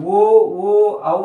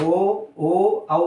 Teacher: ಕಂಠ ಮತ್ತು ಓಷ್ಟ ತುಟಿಗಳ ಸಹಾಯದಿಂದ ಮತ್ತು ಕಂಠದ ಸಹಾಯದಿಂದ ಉತ್ಪತ್ತಿಯಾಗುವಂತಹ ಅಕ್ಷರಗಳು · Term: ಕಂಠೋಷ್ಟ